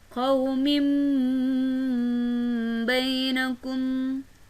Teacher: Qaumin bainakum, kasrotain dibaca seperti bunyi huruf mim, berhukumkan iklab karena kasrotain bertemu dengan huruf ba